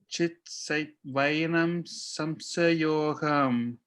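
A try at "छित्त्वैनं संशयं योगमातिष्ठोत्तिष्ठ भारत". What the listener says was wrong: Atishto uttishta bharata. So the ma is in the previous word yogam, and then we start with atishtothishta bharata.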